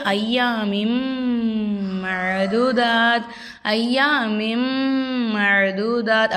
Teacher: குன்னானா மூக்கால மறைத்து ஓதுறது.